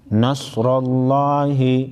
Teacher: صاد کو موٹا پڑھیں گے، را پر زبر ہے، موٹا پڑھیں گے. لفظ اللہ کے لام کو موٹا پڑھیں گے کیونکہ اس سے پہلے والے حرف را پر زبر ہے.